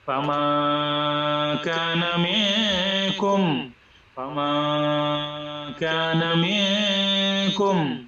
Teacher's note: নাকের ভিতরে সাউন্ড করব, নেজাল সাউন্ড, এবং অ্যাটলিস্ট এক আলিফ টান দিব।